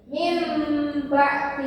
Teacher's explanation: bunyi nunnya berubah menjadi Mim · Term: iqlab